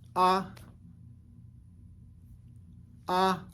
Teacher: an a with a high tone on it and it's a short and a high vowel a sound